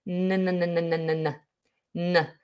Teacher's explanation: N is normally pronounced with the tip of the tongue on the alveolar ridge, which is just behind your top teeth. Ha. For your L's, your D, your T, your tongue tip will touch that space.